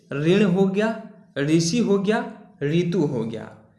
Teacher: ये र प्लस ई का संयुक्त रूप है जो व्यंजनवत रूप में होता है